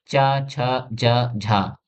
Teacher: ऐसी ध्वनियां जो पहले स्पर्श होती हैं और फिर धीरे-धीरे घर्षण के साथ खुलती हैं। यानी स्पर्श प्लस संघर्ष का मिश्रण। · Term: स्पर्श संघर्षी